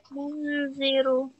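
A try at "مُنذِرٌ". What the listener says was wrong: Bukan mun. Ingat bukan mun. Kalau mun itu jadi jelas. Tapi hampir dekat gitu. Hampir dekat ke huruf selanjutnya. Tapi nggak nempel.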